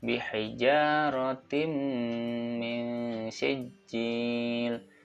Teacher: Ya, ini adalah bacaan idgham bi gunnah yang harus dibaca masuk ke dalam huruf mim dan harus gunnah dengan cara mendengung